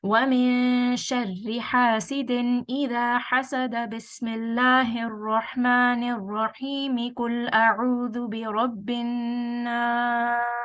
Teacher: So you see in this one, I did not pause when it came to the last ayah. I did not pause after the Basmallah, and I read all of them in continuation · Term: waslul kull